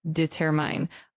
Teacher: make sure that when you say determine, the emphasis is on the second syllable